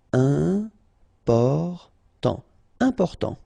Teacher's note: Important, so final T not pronounced, and then remember you've got this EM, and after that it's a consonant, so it is here nasal.